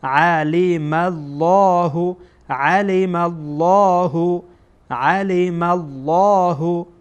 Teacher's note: لام جلاله در اینجا پر خوانده میشه، تفخیم میشه، یعنی پر خوانده میشه